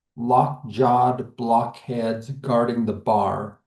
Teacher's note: We get four stressed syllables. So each part of that or each part of the word receives a stress. And so it causes us to slow down that rhythm and it sounds kind of hard and maybe even a little bit more severe than as we usually read.